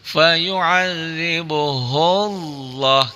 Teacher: Lafaz Allahnya dibaca tafkhim, tebal. Kenapa? Karena sebelum lafaz Allah didahului oleh huruf yang berbaris di atas.